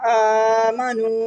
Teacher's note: وا کو منہ گول کر کے ادا کیا.